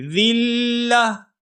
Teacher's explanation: ابصارهم ترهقهم ذلة، ذلة یہاں پر وقف ہو رہا ہے، اور اب آخری جو حرف ہے وہ ہے گولتا. گولتا وقف کے وقت یہاں پر ہا کی ساؤنڈ آئے گی